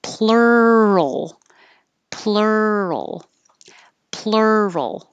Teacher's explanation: And then go from the R back to the L position, but keep making sound so you hear the roll